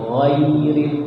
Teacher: dari gha-nya naik, ai-nya turun